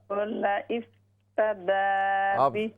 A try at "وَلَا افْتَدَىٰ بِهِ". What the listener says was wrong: आप स्टिल हमजा पढ़ते हैं वाव नहीं पढ़ रहे इफ ना विफ विफ वाव फा जेर आप सुन लें पहले वाव फा जेर विफ वला विफ